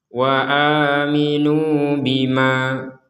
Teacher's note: Misalkan kita berhenti di bima, maka menjadi 2 harokat.